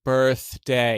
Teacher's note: I'm specifically thinking of the D because if you just say D in isolation, it's right behind your teeth, whereas the TH, you're kind of biting your tongue.